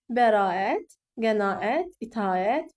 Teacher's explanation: bu yanaşı işlənən saitlərdə A səsi uzun tələffüz olunur.